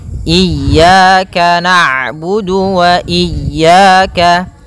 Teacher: Ketika huruf ain berharakat sukun, ain itu punya sifat namanya bainiyah, yaitu bacaan di antara syiddah dan rokhawah. Kalau syiddah suaranya tertahan, kalau rokhawah suaranya mengalir, maka di antara keduanya.